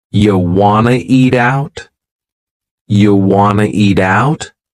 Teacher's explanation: We've dropped the question word completely, do. Just yeah, and then we have reduced want to become wanna. This is a common reduction in English.